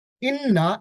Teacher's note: ইন্না এইখানে একটা ওয়াজিব গুণনা করতে হবে।